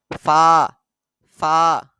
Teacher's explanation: নিচের ঠোঁটের পেট সামনের উপরে দুই দাঁতের আগার সাথে লাগিয়ে নরম করে উচ্চারিত হয়